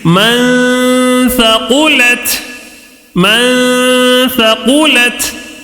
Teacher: نون ساکن کا اخفا ہو رہا ہے. ٹھیک ہے، کیسے پڑھیں گے؟ غنہ کر کے پڑھیں گے